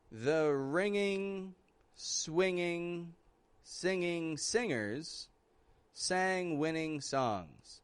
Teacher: I did not release any G. · I don't want you to make any G sounds in these words. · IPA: ŋ